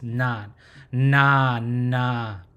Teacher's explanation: it's pronounced na, and should come from the tip of your tongue towards the roof of your teeth, right? Just where that ridge is, na, na, right?